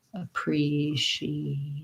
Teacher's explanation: we have second syllable stress the tense vowel e so thinking about it like pre this letter a is an